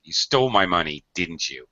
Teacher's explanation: in accusations or blaming someone, you're going to use falling intonation on your tag. You stole my money, didn't you?